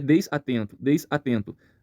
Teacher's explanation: eu não tenho um bloqueio uma pausa depois do S desatento esse som do S ele se liga ao som do a ficando então desatento esse som do n vai para o e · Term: ligação